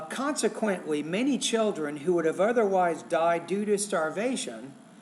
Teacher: I paused after consequently and then after starvation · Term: pausing